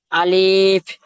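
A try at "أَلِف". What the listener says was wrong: আলিফ বলেছি আমি ভাই, আলিফ নয়। জি না, আলিফ যে টান দিলেন আলিফ নয়, আলিফ। যে আলিফের নিচে দেখেন এখানে চিকে দেওয়া আছে। আলিফের নিচে চিকি দেওয়া আছে, মানে এটা আপনার টান দিলে হবে না, আলিফ বলে টানা যাবে না, টানলে তাহলে ভুল হবে। আলিফ।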